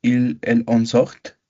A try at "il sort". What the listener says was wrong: En las terceras personas lleva la T, pero no la pronunciamos, ¿sale? Decimos también sort. Je sors, tu sors, il sort. On ne prononce pas le T.